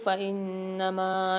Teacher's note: فإنما میں نون پر مشدد ہے، غنہ کر کے پڑھیں گے اور میم کو 3 سے 4 الف کی مقدار کھینچ کے پڑھیں گے۔